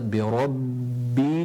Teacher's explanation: Again, you got the ba, ra, and then you got the ba with shadda on it, making sure that you bring your lips together